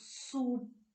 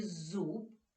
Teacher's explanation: останній звук суп п глухий А у слові зуб б дзвінкий